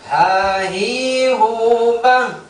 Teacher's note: Yang bergetar itu itu bukan di dada, bukan masuk di dada, tapi di pangkal tenggorokan. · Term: ha besar